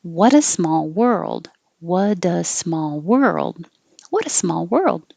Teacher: the r moving to the l position and you keep making noise the whole time and hold the l so you can hear the l world and you don't have · hold the l so you can hear the l world and you don't have to say duh hold it there in the d position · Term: r to l movement